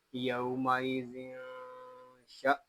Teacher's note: حمزہ ساکنہ کو جھٹکا دے کر پڑھیں گے